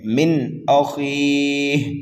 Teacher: نون ساکن کے بعد میں حمزہ آ رہا ہے اس لیے یہاں پر اظہار حلقی ہوگا. من اخیہ، خا کو پر کر کے پڑھنا ہے. · میم مشدد ہے، غنہ کر کے پڑھیں گے · مد عارض کو 1 2 3 الف کے برابر کھینچ کر کے پڑھ سکتے ہیں